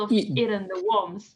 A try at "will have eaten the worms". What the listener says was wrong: So your brain wants to say both of these words in the same emphasis, and it's will have. Just link these together. Will have. eaten worms.